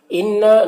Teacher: ان نون مشدد ہے تو نون میں غنہ ہوگا۔